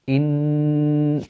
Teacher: the hamsa from the bottom of the throat · When you have inna, the first sound that is created is the hamza from the bottom of the throat.